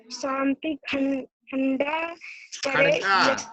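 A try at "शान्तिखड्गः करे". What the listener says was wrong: इसमें खंडा नहीं बेटा, देखिए अड़ा, अड़ा के नीचे हलंत है, अगर ऐसी हलंत के साथ में अड़ा के साइड में क्या होता है, बिंदी होता है, तो यहाँ पे ना पढ़ा जाता, ना रीड होता, लेकिन यहाँ पे अड़ा है तो खड़गा, खंडा नहीं, खंगा नहीं होगा।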